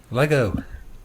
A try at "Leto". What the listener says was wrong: It's Leto, the T.